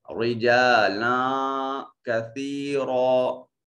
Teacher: یہاں لام منون کے بعد کاف حرف اخفا ہے، تو یہاں لام کے اوپر جو تنوین ہے اس کی وجہ سے جو نون پیدا ہو رہا ہے اس کو اپنے مخرج میں چھپا کر پڑھیں گے